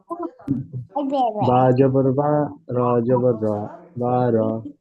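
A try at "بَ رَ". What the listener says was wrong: জি তারপরেরটা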